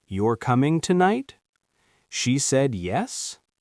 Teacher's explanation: in casual speech, we often use rising intonation instead of perfect question structure.